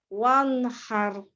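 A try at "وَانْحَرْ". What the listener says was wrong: Nunnya jangan tebal. Nunnya nggak tebal. Coba lagi.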